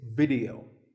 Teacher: The important thing is that both the I and the E are pronounced as short I sounds.